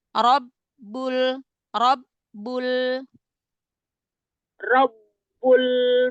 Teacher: berhenti di eh lailahaillahu e ro ro Langsung angkat pangkal lidah ro fathah dibaca tafhim